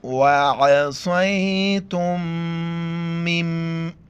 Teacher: نون کو ہم نہیں پڑھیں گے، اس کو ہم پڑھیں گے میم، میم کو میم کے ساتھ ملائیں گے اور ناک میں آواز پیدا کریں گے